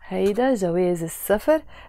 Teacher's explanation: the letter سين is a sun letter, and all the words in Arabic that start with a س, the س sound, when we add L to them, which means the, we don't pronounce the L that is there. We just say سفر.